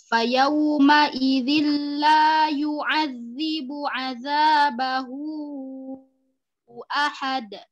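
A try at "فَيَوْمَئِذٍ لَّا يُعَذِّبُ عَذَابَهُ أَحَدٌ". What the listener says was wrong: Iya, jayid. Ahsan. Barakallahu fiki.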